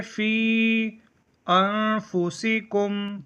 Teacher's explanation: فی میں یا حرف مدہ ہے، اس کے بعد دوسرے لفظ میں انفسکم میں حمزہ آ رہا ہے تو یہ مد منفصل ہے